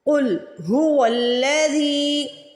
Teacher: زال کے نیچے زیر ہے، زیر کے بعد یا ساکن آ رہا ہے یعنی یا مدہ آ رہی ہے تو زال کو کھینچ کے ادا کریں گے